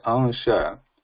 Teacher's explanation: But when we say ansha, a is not becoming nasal, but there is a nasal sound following a ansha. So that is the Anusvara.